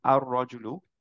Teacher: এরকম হয় র হয় যেই ক্ষেত্রে আমরা এখন পড়লাম আর রজুলু র টাকে মার্চ করে ফেলেছি লামটা বাদ দিয়ে দিয়েছি র টাকে দুইবার পড়লাম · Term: ইদগাম